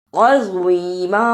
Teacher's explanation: اسے عظیمہ نہیں پڑھنا، زوا کی جگہ پہ زا کی آواز نہیں آنی چاہیے